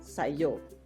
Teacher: sa that comes before it so you always hear Sayo so when sa and EO are put together in a sentence Filipinos pronounce only the second syllable in EO so you only hear yo